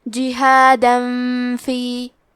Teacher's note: یہاں حکم ہے اخفاء، لہذا ہمیں یہ حکم کو غنہ کے ساتھ ادا کرنا ہے